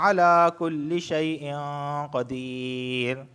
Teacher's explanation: تنوین کے بعد قاف آیا ہے اور قاف حروف اخفا میں سے ہے تو یہاں پر اخفا والا غنہ ہوگا